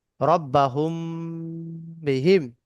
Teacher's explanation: মিম সেকেন্ডের পরে বা এলে মিম সেকেন্ডকে গুণনা করে পড়তে হয়, একে ইকফায়ের স্বাভাবিক বলে।